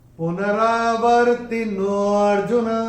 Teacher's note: तो इसको हम थोड़ा सा खींच के बोलेंगे अवग्रह, वो विलुप्त अ निकल के आना चाहिए अर्जुन का।